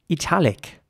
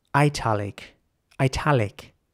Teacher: italic with an e sound for the I and in American English it would be more like italic italic with an i sound for the I